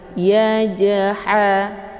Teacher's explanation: Cara bacanya, huruf jimnya dipantulkan dengan pantulan ringan. Yajha, keluar bunyi j. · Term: qalqalah sughra